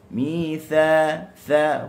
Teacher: huruf tha hujung lidah di hujung gigi atas juga